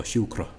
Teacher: And this typical English R, whereas in Irish it's typically a tap. So shukra, just one short R, and it's gone.